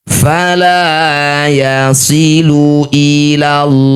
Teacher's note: Lafaz Allah didahului fathah atau dumah. Maka huruf lam pada lafaz Allah ini kita ganti jadi lo. Baca tebal baca dengan tafkhim.